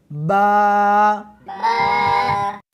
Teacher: اس حرف کو دونوں ہونٹوں کے ساتھ ملا کر پڑھیں گے